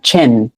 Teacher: So imagine a CH like on T invisible, like there's an invisible T in front of the CH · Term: CH sound